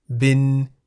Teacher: Bin begins with a middle-class consonant bo by mai. Therefore, based on the tone rules for live syllables, bin is in the middle tone